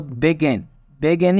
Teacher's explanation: Last उसका जो syllable है वो स्ट्रेस हो रहा है, बिल्कुल ही स्ट्रेस हो रहा है।